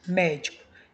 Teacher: Ela possui a antepenúltima sílaba tônica. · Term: proparoxítona